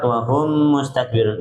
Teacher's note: idghami mimi atau mithlain ya, 3 harokat ditahan dulu